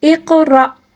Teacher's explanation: اب دیکھیں قاف کے اوپر ساکن ہے، اس کو قلقلے کے ساتھ پڑھیں گے